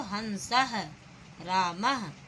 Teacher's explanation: जैसे हंसः, आपने देखा हन यहाँ अनुस्वार आया और सह यहाँ विसर्ग आया, तो हमने यहाँ पे इन 2 बिंदियों को हम हा वर्ण से उच्चारित करते हैं